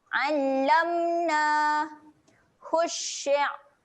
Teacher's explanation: Berhati-hati makhraj huruf ain dan lagi satu sifat dia ketika mati adalah tahan angin. Okey, jangan ada bunyi lantunan.